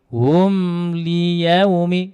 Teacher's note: Mim sukunnya, ingat membaca ini tidak boleh diputus ya. Mim sukunya tidak boleh diputus, tidak boleh juga didengungkan, tapi disempurnakan.